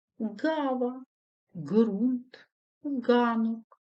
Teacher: утворюється за допомогою задньої частини язика